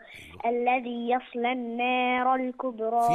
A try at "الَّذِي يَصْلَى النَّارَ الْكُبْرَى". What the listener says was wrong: في برضو النون مشددة هنا برضو في النار. الذي يصلى النار، انت قلت ايه؟ ويتجنبها، يبقى برضو الذي يصلى النار.